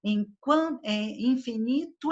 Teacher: a vogal que termina uma sílaba emenda na vogal que inicia a sílaba da palavra seguinte